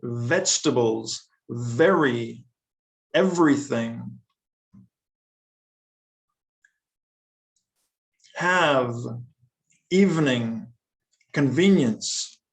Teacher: i'm putting my top teeth on my bottom lip